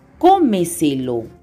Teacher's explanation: La mayor fuerza de voz es en la anterior a la antepenúltima sílaba. Todas, sin excepción, llevan tilde.